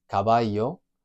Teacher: the double L, you can almost treat it like a different letter. It makes a Y sound for a lot of Spanish speakers. For some, it makes a J sound, a bit like the English J.